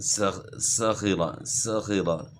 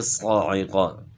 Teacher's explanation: سین باریک ہے اور صاد موٹا ہے، مخرج ایک ہے